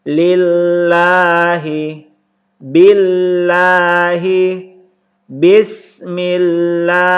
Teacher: ketika lafaz Allah sebelumnya berbaris kasroh atau berbaris bawah, maka dibaca tarqiq atau dibaca tipis. Lillahi, jangan dibaca lillahi, tapi dibaca tipis.